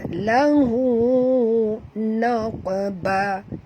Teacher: qaf mati di tengah-tengah kalimah, kena lantunkan dia qalqala surah